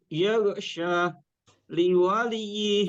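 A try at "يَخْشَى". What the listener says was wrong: Sya-nya kurang panjang sedikit. Yaghsha. Yaghsha. Ya, ada fathah bertemu alif bengkok.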